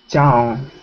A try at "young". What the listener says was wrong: No, your mouth is closed. Open your mouth. Watch me. Young. Young. That's how you make that sound, with your mouth open.